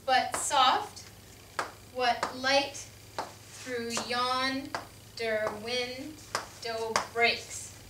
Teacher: this poem is pentameter because it has five iambic feet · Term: iambic pentameter